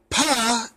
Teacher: pa is a labial sound, but its manner of articulation is that of a stop, meaning that it has that it completely stops the airflow.